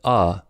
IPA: ə